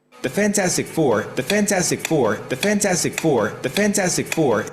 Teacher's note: They do put a secondary stress on fan.